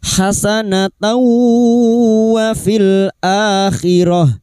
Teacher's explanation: Nun sukun atau tanwin yang bertemu dengan salah satu dari empat huruf ini memasukkan dengan mendengung, idgham bi gunnah, masuk pada huruf berikutnya yaitu huruf wawu dan mendengung selama 3 harokat